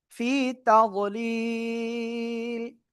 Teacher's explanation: থেমে পড়লে লামে সাকিন। ঠিক আছে, তার আগে এক আলিফ মাদ, এজন্য এখানে 3 আলিফ টেনে পড়বো।